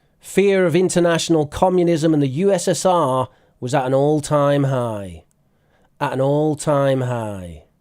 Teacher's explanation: notice they're dropping the T sound like in British English